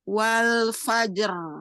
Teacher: Bukan getarannya yang ditambah tapi suara rnya yang ditebalkan. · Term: suara roknya yang ditebalkan